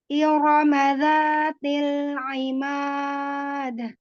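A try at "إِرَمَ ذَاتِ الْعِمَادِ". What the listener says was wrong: Ya, masih aimad, masih ke hidung huruf ainnya aimad. Tidak tidak aimad.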